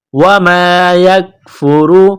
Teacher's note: काफ को बारीक करना है र को मोटा करना है